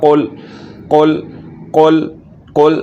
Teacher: زبان کی جڑ کو تالو کے نرم حصے کے ساتھ لگائیں گے اور دوسرے نمبر پر اس حرف کو موٹا کر کے پڑھیں گے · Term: کاف